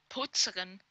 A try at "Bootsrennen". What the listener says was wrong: Bootsrennen, ja, nicht Poots, ja, Boots.